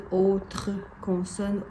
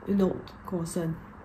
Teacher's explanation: It's pronounced une autre consonne when people speak proper, but when they speak normally, in Quebec French, it's une aut' consonne.